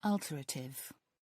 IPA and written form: ˈɔːltərətɪv (alterative)